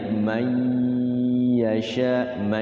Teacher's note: disamarkan nunnya itu masuk kepada huruf di depannya sambil digunakan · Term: idgham